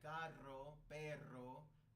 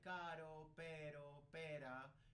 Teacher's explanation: we roll it when we're talking about double R